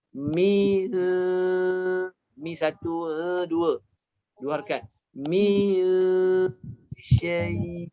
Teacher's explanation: mim satu harkat keluar kat mulut, dengung 2 harkat. 2 harkat. Dengung kadarnya 2 harkat.